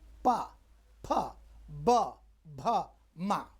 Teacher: पांचवा है ओष्ठ इसमें ओठ को चिपकाना पड़ता है